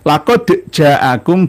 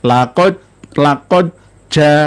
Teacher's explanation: langsung masuk dari dal ke jim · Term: idgham